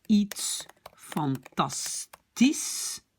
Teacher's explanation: le SCH se prononce déjà comme S